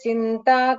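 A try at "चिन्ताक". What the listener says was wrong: So Chinta, after that Dirgha is there. Chinta. So it's this Dirgha here was not heard when you chanted.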